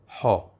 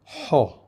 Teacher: The original way of pronouncing this sound is much more guttural, from way back in the throat.